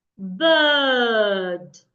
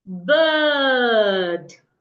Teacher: My tongue is in a relaxed position, and I'm trying to make a sound that is longer.